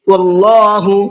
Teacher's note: اللہ کے نام کو منہ بھر کے پڑھنا ہے